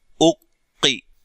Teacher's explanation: हमजा पेश कौफ, उक, कौफ जेर की, उक्की, यहां कौफ को मोटा अदा करेंगे, लंबा भी नहीं करेंगे और मोटा करेंगे, ठीक है। मोटा हरफ है, लिहाजा इसकी आवाज मोटी होगी, लेकिन लंबा नहीं करेंगे।